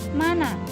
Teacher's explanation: bunyi nasal bilabial atau M dan lamino alveolar atau N dilafalkan dengan jelas baik yang terdapat di awal, di tengah maupun di akhir kata.